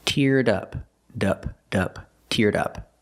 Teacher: Link the sounds. Link the D sound, teared, to the next sound, in up.